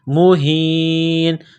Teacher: عذاب مہین، عذاب مہین. یہ چشمے والی ہا ہے، صرف منہ سے ہوا نکالنے کی طرح پڑھیں گے